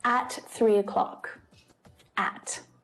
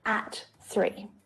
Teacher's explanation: by stressing at i'm adding emphasis i'm making the meaning stronger you need to be here exactly at three o'clock not before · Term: stressed